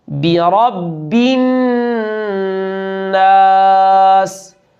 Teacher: با کی زیر کو معروف پڑھنا ہے، بے نہیں